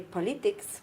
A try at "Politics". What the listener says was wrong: Politics. Where's the schwa?